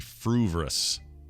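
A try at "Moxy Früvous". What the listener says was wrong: There's just one R in there. It's Fruvus. Not Fruvrous or Fruvious or anything like that. It's not anything else that it isn't. it's just Fruvus.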